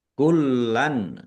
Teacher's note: lamnya ada tasdidnya dibaca dobel kullanan ya ditekan jangan ini juga jangan malas menekan kalau ada tasdid ya ditekan ya kecuali mim tasdid dan nun tasdid.